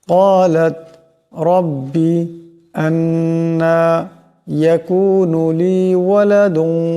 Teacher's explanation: ক্বালাত এখানে কাফকে মোটা আওয়াজে পড়তে হবে, রব্বি রাকেও মোটা আওয়াজে পড়তে হবে।